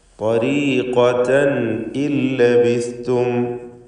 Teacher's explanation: തൻ എന്നതിലെ തൻവീൻ അതിനെ ഇൽഹാർ ഹൽഖി നൽകി മണിക്കാതെ വെളിവാക്കണം